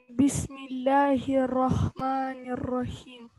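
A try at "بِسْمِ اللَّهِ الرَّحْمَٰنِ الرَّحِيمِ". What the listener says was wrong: Угу, только удвоение не теряй. Бисмилляхи не рахмани, а бисмилляхи рахмани, как удвоенное ра и две.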